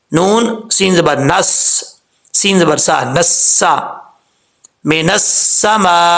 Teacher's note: Okay, اس کے بعد ہے من السماء، نون کے بعد الف ہے، پھر لام ہے، پھر سین ہے. ہم نے نون کو الف اور لام کے ساتھ نہیں ملانا، نون کو ہم نے سین کے ساتھ ملانا ہے.